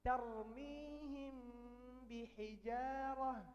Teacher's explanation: Tarmihim, mim sukun, harus tanya bihijarah. Maka mimnya di sini disembunyikan. Tarmihim, langsung ke makhraj ba, bihijarah. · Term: ikhfa syafawi